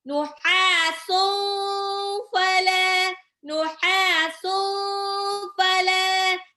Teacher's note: Lamnya mat tabi'i 2 harokat. Ya. Lamnya 2 harokat.